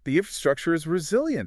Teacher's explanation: They raise their voice at the end. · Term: uptalk